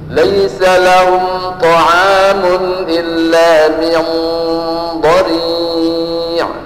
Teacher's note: maka ikhfa'nya itu pakal atau kental atau tafkhin, gemuk, mokoh. Cara praktiknya, begitu kita ketamyung langsung diarahkan ke makhraj huruf dha, tidak min dha tapi min dha.